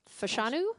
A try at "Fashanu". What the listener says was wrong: The emphasis is on the wrong syllable.